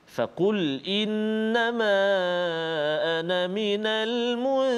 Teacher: Fokus kita adalah kalimah al-munzirin, iaitu huruf ra yang berbaris kasrah ataupun baris bawah, maka kita baca dengan tarqiq ataupun nipis